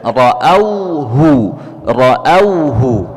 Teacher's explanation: ra, ya, yang berharakat fathah dibaca dengan tebal, ya, dengan tafkhim, ya. Ra'auhu, ra'auhu, ya, jelaskan huruf hamzah berharakat fathah, ya.